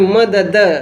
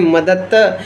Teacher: तो द का त में परिवर्तन यानी घोष शब्द का अघोष में परिवर्तन इसे हम अघोषीकरण के नाम से भी जानते हैं।